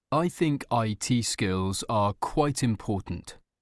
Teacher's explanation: voice goes down on the word important